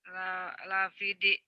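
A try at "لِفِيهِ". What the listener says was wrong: Itu ha Bu. Lafihi. Fi-nya panjang. Lafihi. Fi-nya panjang. Lafihi.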